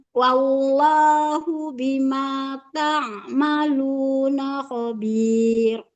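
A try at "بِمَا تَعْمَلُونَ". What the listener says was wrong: Nah, hati-hati taknya jangan panjangnya, jangan ta. ta'maluna. Jangan ta.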